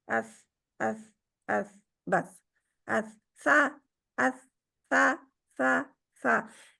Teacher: बारीक भी है और नरम भी है। सा में सीटी नहीं पाई जाती।